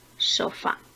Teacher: Sofá es una palabra aguda, porque al igual que comer, tiene su sílaba tónica en la primera sílaba.